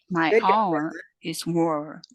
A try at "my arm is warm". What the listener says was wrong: get your final syllable your final consonant though because I'm hearing War which sounds like fighting